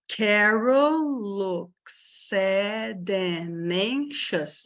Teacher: eu assimilei o D, tá? Eu não estou pronunciando esse D.